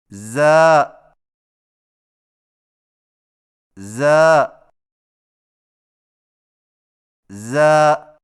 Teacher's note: زا کی ادائیگی میں زبان کی نوک کو ثنایا سفلی کے کناروں سے مضبوطی سے لگا کر باریک اور سیٹی جیسی آواز میں پڑھیں